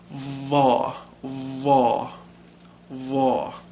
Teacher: pointing at the roof of the mouth kinda saw law and then you have an emphatic interdental fricative · And then you have an emphatic interdental fricative. So it's like tha or thal, but it's va, Thaw.